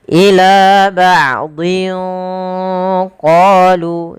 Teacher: maka dia hurufnya tanwinnya disamarkan ke huruf qaf. Ila ba'dhin qalu, sambil ditahan. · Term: ikhfa